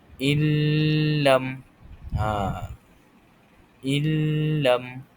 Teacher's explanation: dia terus sambung pada huruf lam tanpa menyebut huruf nun tersebut. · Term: idgham bila gunnah